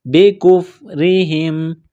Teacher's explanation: را کے نیچے زیر ہے، را کو باریک کریں گے